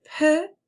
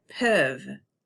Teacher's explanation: The sound E in peu is a closed vowel sound, and the sound E in peuvent is an open vowel sound